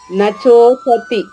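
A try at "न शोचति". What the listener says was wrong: షో కదమ్మా. ఒకటి షో, రెండవది చ శోచతి. నశోచతి అంతే.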